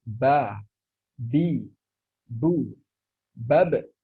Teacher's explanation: huruf ba makhrajnya dengan merapatkan kedua bibir kita jadi seandainya kita ingin mengucapkan ba tetapi bibir kita ini tidak